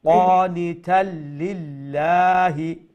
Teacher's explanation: তাকে লামের সাথে জয়েন করা হবে, তারপরে প্রথম লাম দ্বিতীয় লামের সাথে জয়েন করা হবে।